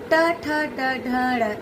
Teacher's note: इन्हें कहते हैं मूर्धन्य ध्वनि, क्योंकि जीभ हमारी मूर्धा को छूती है।